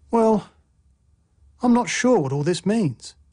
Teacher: a full rising tone expresses uncertainty